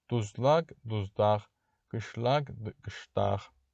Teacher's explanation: Çünki sözün sonu qız samitli sözün sonunda gələrsə x-ya çevrilirdi. L da öz növbəsində d-ya çevrilir. · Lak şəkilçisi isə dax formasında tələffüz edilir